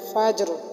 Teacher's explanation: را کے نیچے زیر ہے لیکن ہم نے وقف کی صورت میں را بھی پر پڑھی ہے